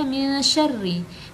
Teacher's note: min syarri, dibaca dengan samar disertai dengung